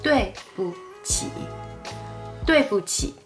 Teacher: The word in the middle, 不, here is pronounced in a neutral tone. It's lighter and softer than the normal pronunciation 不 or 不.